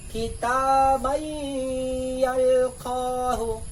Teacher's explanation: Yalqohu, dibaca sebagai kitab-yalqoh, mengapa? Tanwin menghilang, ia masuk ke dalam ya, dan ya dinasalisasi · Tanwinnya hilang, sudah masuk kepada ya. Nah, ya-nya didengungkan. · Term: idgham bighunnah, idgham bigunna